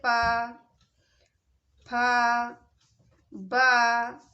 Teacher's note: जो होस्ट है होस्ट व्यंजन में श्वास का अवरोध होता है दोनों होटों के द्वारा शवास का अरोध होता है